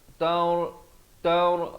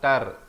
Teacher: Taur bukan tar, jangan baca macam T-A-R, tar. Tak betul, dia kena baca taur, ra di sini jadi tebal